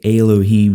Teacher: in the vast majority of cases and so ale becomes Elohim you shorten what's up front so that you can throw that accent on the end